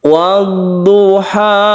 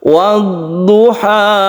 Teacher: Ha ini satu alif saja karena dia mad tabi'i, meskipun ini bukan alif tapi ini disebut dengan alif layyinah, alif maksurah, ya yang tidak bertitik ini menunjukkan panjang satu alif.